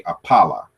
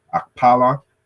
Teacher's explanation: in different variation, the K is dropped